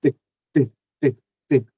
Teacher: O T, ele é surdo, ele não vibra as cordas vocais.